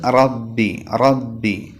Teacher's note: നാവിന്റെ തലയുടെ മുതുക് മേലെ മുൻപല്ലിന്റെ ഊനിൽ തട്ടിച്ചിട്ടാണ് റാഹ് പറയേണ്ടത് മുതുക് എന്ന് പറയുമ്പോൾ നാവിന്റെ തലയുടെ മുകൾ ഭാഗം മേലെ മുൻപല്ലിന്റെ ഊനിൽ തട്ടിക്കണം